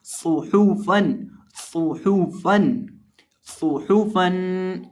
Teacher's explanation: तो यहाँ हम सौद और हा को पढ़ते वक्त अपने होंठों को गुलाई में पढ़ेंगे और इसी तरह फा के ऊपर 2 ज़बर की तनवीन है और फा का मखरज देख लें। फा का मखरज है निचले होंठ का वस्त जब सामने वाले ऊपर के 2 दांतों के किनारे से लगता है तो फा अदा होता है · इस तरह नहीं पढ़ेंगे, यानी यहाँ आखिर पे हम गुन्ना करके नहीं पढ़ेंगे।